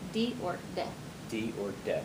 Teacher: this is a voiced sound. And when you say it, your tongue is kind of in the front of your mouth against your teeth.